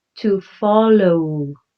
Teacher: you spell it with a W at the end, but that W sounds like a vowel. It sounds like a U.